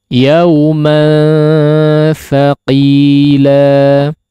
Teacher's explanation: mad iwad di akhir ayat di sini, setiap akhir ayat sampai akhir surat ya, kadarnya hanya 2 harakat ya, kadarnya hanya 2 harakat saja, jangan dilebihkan daripada 2 harakat.